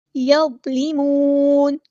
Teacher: لام باریک ہے اور لام کی زیر کو باریک ہی پڑھنا ہے